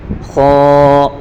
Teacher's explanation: خا کو پر پڑھیں گے